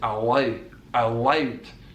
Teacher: So it's a dark L, not a light L on the L of allowed.